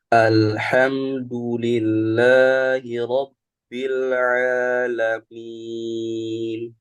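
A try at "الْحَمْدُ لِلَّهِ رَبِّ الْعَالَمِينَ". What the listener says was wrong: Lamnya jangan mantun. A Robbil alamin.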